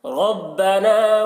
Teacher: را کو پر پڑھیں گے، را کے اوپر زبر ہے